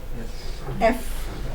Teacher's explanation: Lower lip आपका अपर वाले teeth के साथ लगेगा · इसमें क्या होता है, लेबियोडेंटल sound. Sounds articulated by lower lip against the upper teeth. Lower lip और अपर टीथ उनके साथ लिप.